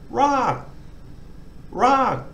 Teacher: class initial consonant dead syllable long vowel gives a falling toe so we've got to try to sort of start higher and then fall off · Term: falling tone